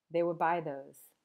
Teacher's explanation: instead of would, you might just hear w, like they would buy those.